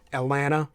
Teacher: you basically just skip the T all together Atlanta right or it's pronounced more like a d I have